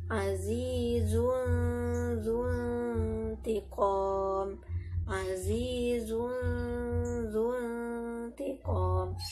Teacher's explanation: Dia ada dengung, suaranya masuk ke hidung.